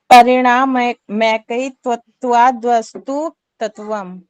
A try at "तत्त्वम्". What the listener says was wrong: तत्वम नहीं है, ये तत्वम बोलेंगे इसको। आधा तय है और उसके साथ एक और तय है, तो तत्वम त्वम बोलेंगे। तत्वम नहीं बोलेंगे, त्वम बोलेंगे।